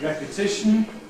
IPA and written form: ˌrepəˈtɪʃn̩ (repetition)